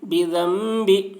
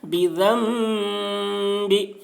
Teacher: نون ساکن کے بعد با آ رہا ہے اس لیے نون کو میم سے بدل کر غنہ اور اخفا کے ساتھ پڑھیں گے، اس کو اقلاب کہتے ہیں.